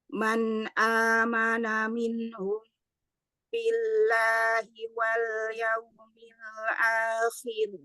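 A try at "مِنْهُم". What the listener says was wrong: Coba sedikit lagi dorongnya. Minhum, hu, hu. Hum, man amana minhum, hu, hu.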